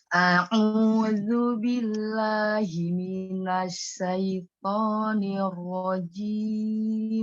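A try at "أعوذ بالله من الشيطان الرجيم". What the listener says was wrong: A-nya tidak dipanjangkan, satu harokat. Tidak tidak ngayun alifnya. Yang ngayun Minasyaiton. Nirrojim. Memang nanti huruf ro kan ada dua ya, ada tipis dan tebal. Ketika dia sukun sebelumnya dia kasroh, dia tipis, nir, tipis. Jadi ro-nya baru tebal, tapi tidak mencari semua ditebalkan nirro, tidak.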